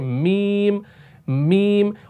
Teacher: यानी नाक से भी एक वाइब्रेशन वाली साउंड हो रही है। आपके वोकल कॉर्ड्स तो बज रहे हैं, जैसे मीम मीम, और नाक में भी जो है ना आवाज जा रही है।